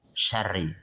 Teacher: Itu ri kasrah maka dia dibaca tarqiq tipis